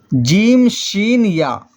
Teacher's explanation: جیم شین یا بھی زبان تالو سے مل کر جیم شین یا غیر مدہ ادا ہوتی ہے